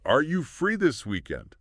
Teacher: Yes, and this phrase perfectly highlights that pattern we mentioned earlier, the rising intonation at the end of yes/no questions.